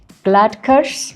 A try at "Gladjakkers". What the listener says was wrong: No, there's a J in there.